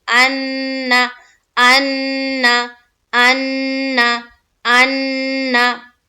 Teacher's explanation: एक अलिफ बोलने में जितना वक्त लगता है उतना हम नून को वहां पर गुन्ना करेंगे